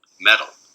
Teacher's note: And this one, you can see it sort of lightens up a little bit. There's like a very, very short cessation of energy, but it's not a real stop. · And again, just like the voiceless coronal stop, the voiced coronal stop becomes a tap here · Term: tapped stop